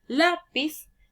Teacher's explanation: En cambio, las palabras graves van a ser aquellas que también se llaman paroxítonas y van a llevar la mayor entonación de voz en la penúltima sílaba